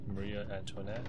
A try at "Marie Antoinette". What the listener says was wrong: Marie. Antoinette. There's an A with her last name, so you went Maria Antoinette.